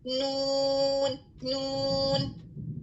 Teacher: جب آپ نون ادا کر رہے ہیں آپ کے منہ سے جو ہوا بلاک ہوئی ہے اس کا کچھ حصہ جو ہے وہ ناک سے باہر نکلتا ہے. تو نون کی ادائیگی کے دوران ہوا کا کچھ حصہ تو نکلتا ہے اور کچھ حصہ بلاک ہو جاتا ہے. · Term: غنہ